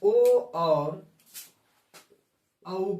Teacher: कंठोष्ठ से। कंठ और ओष्ठ से मिला करके ओ और औ का उच्चारण होता है।